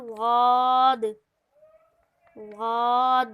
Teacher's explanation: زبان کی کڑوٹ جب اوپر کی داڑھوں سے لگے، بائیں طرف سے آسان اور دائیں طرف سے مشکل، دونوں طرف سے ایک دم نکالنا تھوڑا مشکل ہے لیکن ہم لوگ کوشش کریں گے۔